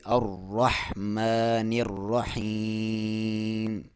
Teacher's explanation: میم کے اوپر کھڑی زبر ہے تو اس کو آپ ایک لفظ کے ایک الف کے برابر لمبا کریں گے